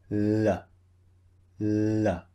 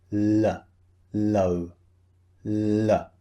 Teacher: when you pronounce the L sound, the tongue is just behind your front teeth. So it's behind the front teeth, touching the top of the mouth.